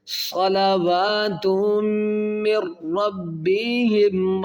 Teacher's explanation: جب نون ساکن کے بعد جب را آئے گی تو یہاں پر غنہ نہیں کیا جائے گا. ٹھیک ہے، مطلب یہ ہوتا ہے ادغام بلا غنہ ہوتا ہے.